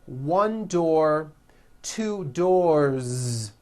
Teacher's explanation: with a voiced z ending